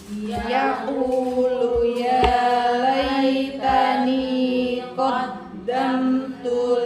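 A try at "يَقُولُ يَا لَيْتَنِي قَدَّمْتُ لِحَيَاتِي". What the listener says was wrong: Qaddamtunya, off-nya jangan berubah, sama takarannya. Yaqulu qaddamtu harus sama takarannya ya. Benturan dari pangkal lidah ke langit-langit itu sama ya.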